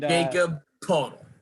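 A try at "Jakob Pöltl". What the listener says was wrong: it's butchered that name like I didn't think anybody could butcher it. It's not Jacob Podol. It's Jakob Pertl.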